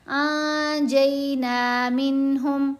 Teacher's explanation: تھوڑا سا پیچھے سے ملا کر پڑھا جائے گا، عن الفساد فی الارض الا قلیلا ممن انجینا منہم، ممن، میم کو میم سے ملاتے ہوئے ہم نے غنہ کیا، لام کو میم سے ملاتے ہوئے بھی غنہ ہے، پھر انجینا، انجینا نہیں پڑھا جائے گا، نون ساکن کے بعد جیم ہے، جیم حروف احفا میں سے ہے تو یہاں ہم پڑھتے ہیں نون کی آواز کو ناک میں چھپا کر